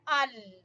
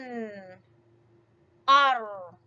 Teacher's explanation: جب اس کو پڑھیں گے ال تو زبان وہاں پر ٹکرا رہی ہے، زبان کا کنارہ اوپر والے دانتوں کے جڑ سے جا کے لگ رہا ہے، مسوڑوں سے لگ رہا ہے. ال.